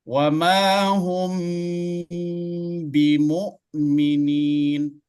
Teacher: Kenapa dia harus didengungkan? Karena dia mim sukun bertemu dengan ba. Mim sukun berada pada syafatain. · Kemudian ba juga berada pada syafatain. Mim berada pada dua bibir. Ba juga berada pada dua bibir. Sehingga dia didengungkan. Wa ma hum, habis M ba, ya kan? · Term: ikhfa syafawi